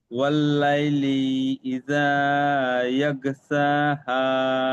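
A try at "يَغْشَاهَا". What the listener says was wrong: না, ওটাও আপনার সিন উচ্চারণ হচ্ছে, এটা শিন উচ্চারণ করেন। ইয়াগো শাহা।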